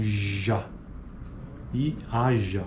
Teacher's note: Fricativa alveopalatal vozeada, que seria o mesmo exemplo do dia, mas sem o D